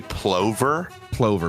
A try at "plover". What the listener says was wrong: It would just be a lover. The P is silent.